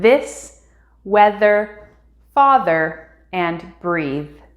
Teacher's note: sound 43 has to be the voiced th sound